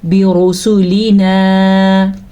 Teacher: را کو ہم پر پڑھیں گے کیونکہ را کے اوپر پیش یا زبر ہو تو را پر کا مطلب موٹی پڑھی جاتی ہے